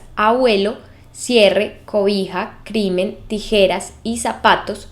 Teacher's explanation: Tienen el acento en la penúltima sílaba. Y ninguna de estas palabras se acentúa porque todas terminan en vocal o N o S. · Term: palabras graves